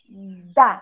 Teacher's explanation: minha boca produz o som do ar que é a vogal Então vou produzir o som consonatal colocando a língua atrás os meus dentes